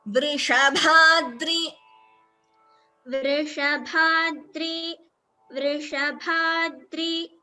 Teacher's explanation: Here Vrishabhadri, Bha is Mahaprana.